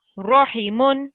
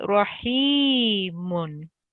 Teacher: because we have the ya after the kasra, it stretches it out for 2 seconds to make it rahimun. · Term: ya maddah